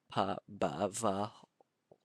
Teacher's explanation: Um, um, it's actually a characteristic because whenever you have verb conjugations involving um, the lips, the lips like pa, ba, va, you all pronounce this using your lips, so it's um, easily gets a consonant alternation because it's far easier to pronounce, adding a kind of lubricant here before a vowel.